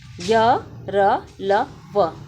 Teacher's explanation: य र ल व ये अल्प प्राण व्यंजन और सघोष है